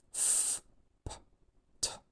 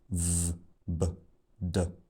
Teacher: the sounds f, p, t don't have voicing, and the sounds v, b, d do have voicing. And in fact, those 6 sounds that I've just given as examples form three pairs of sounds where the main difference between the two sounds in the pair is whether they're voiced or not and when the voicing starts.